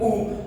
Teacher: जब आप उ करते हैं तो आपके दोनों ओठ जो है सिकुड़ जाते हैं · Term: ओष्ठ वर्ण